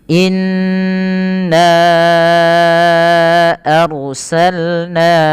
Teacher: Maka ini ditahan dulu n-nya sepanjang 2 harakat, baru dilepaskan.